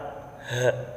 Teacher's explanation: Selanjutnya huruf yang nomor 27 yaitu huruf h, yang dimana huruf h ini makhrajnya atau tempat keluarnya tenggorokan yang paling dalam, h. Dan sifat-sifatnya yang pertama nafas berhembus, lunak dan suara tidak tertahan